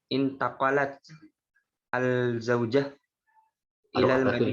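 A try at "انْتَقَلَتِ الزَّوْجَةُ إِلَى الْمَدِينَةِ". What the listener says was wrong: Baca, harokat akhirnya dibaca. Intaqalat, harokat akhirnya dibaca. Jadi kalau intaqalat, kalau mau baca sambung intaqalat itu jangan intaqalatul zaujah, intaqalati ya, karena sukun, dia sukun benernya.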